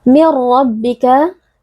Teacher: bila ghunah karena ada nun sukun yang bertemu dengan huruf ro cara membacanya adalah dengan meleburkan huruf nun ke dalam huruf ro kemudian dibaca tanpa dengung ro juga merupakan Huruf tebal sehingga kita harus membacanya dengan mengangkat · meleburkan huruf nun ke dalam huruf ro kemudian dibaca tanpa dengung ro juga merupakan Huruf tebal sehingga kita harus membacanya dengan mengangkat pangkal lidah kita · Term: idgham bila ghunah